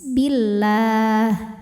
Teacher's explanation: lam jalalah dibunyikan secara tarqik sebab harakat huruf sebelumnya kasrah maka bunyinya tipis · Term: tarqiq